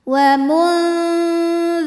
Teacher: Dengung dan kesamarannya sama karena dzal ini makhrajnya tidak terlalu dekat, juga tidak terlalu jauh dari nun. Jadi ujung lidah kita sudah ke makhraj huruf dzal, sudah menempel pada ujung gigi sari atas ya ujung lidahnya, tapi tidak menekan.